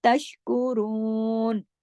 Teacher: तशकुरून, शीन को जमाओ के साथ, तमाम बारीक हुरूफ है। रू को दो हरकत खींचना है, बाकी एक एक हरकत पढ़े जाएंगे।